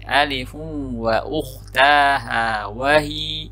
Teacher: Saya ulang kembali di bagian alifun ya. Di sini tanwin ketemu wawu, cukup dimasukkan ke wawunya tapi tidak ditahan terlalu lama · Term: idghamil gunnah